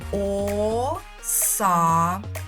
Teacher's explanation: Ми тягнемо голосний звук А. Ми це чітко з вами чуємо. Отже, саме цей голосний звук а і є наголошеним, а він знаходиться у другому складі.